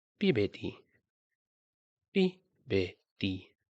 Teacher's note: So you can hear that the pitch starts high, pi, and then it drops, beti, pibeti.